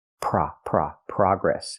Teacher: In America, we use the open ah sound like hot and stop. Progress. We don't use the long O like no and go, progress.